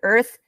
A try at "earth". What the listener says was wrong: you kind of say earth, and you don't say the part all the way. So let me just say earth. Earth. Yeah, it's like you're saying the, like at the end of it. So the earth. No, it's the TH sound, like the, like THE. Earth.